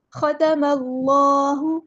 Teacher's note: اللہ کا لام ہم یہاں پہ پر ادا کریں گے، موٹا ادا کریں گے